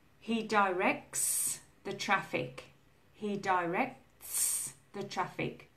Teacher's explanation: No vibration, it's a s sound